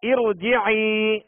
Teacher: یہاں را ساکن سے پہلے زیر عارضی ہے لہذا را کو پور پڑھیں گے، یعنی موٹا کر کے پڑھیں گے